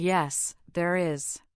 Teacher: Notice how there is stressed.